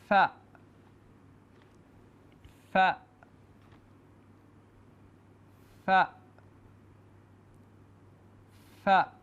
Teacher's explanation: اوپر والے سامنے کے دو دانت نیچے والے ہونٹوں سے لگا کر فا ادا کیا جاتا ہے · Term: فا کا مخرج, حرف فا کی آواز